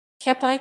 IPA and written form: ˈkɛmpjɛ (Kępie)